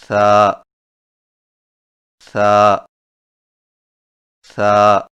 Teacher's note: ثا کی ادائیگی میں زبان کی نوک کو سامنے والے اوپر کے دو دانتوں کے اندرونی کناروں سے نرمی سے لگا کر باریک آواز میں پڑھیں، یعنی ثا ثا ثا۔